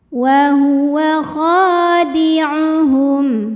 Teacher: kha mad tabi'i zahiri sebab ada alif didahului baris fathah, maka cara bacanya panjang kha-nya 2 harokat